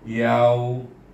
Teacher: Sebab sebelum waw baris di atas, maka dia berfungsi sebagai huruf lin. Baca dengan lembut, yau.